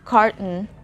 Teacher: t here instead of saying carton carton we say carton carton the letter t here is a silent t and the o here is a schwa